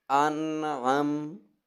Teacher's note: ٹھیک ہے، نون ساکن ہے، نون ساکن کے بعد عین ہے، عین، اور یہ عین حروف حلقی میں سے ہے، جس کی وجہ سے ہم نون پر غنہ نہیں کریں گے